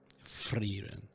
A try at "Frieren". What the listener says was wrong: Not a full roll. Just a flick.